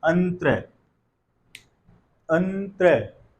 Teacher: जब इसका उच्चारण कर रहे हैं तो अ के बाद एक न की ध्वनि सुनाई दे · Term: अनुस्वार